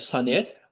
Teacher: Sonet sözü, deyiliş və yazılışında bir fərq var, bəli, sonet. Vurğusu son hecəyə düşür, bəli, doğrudur.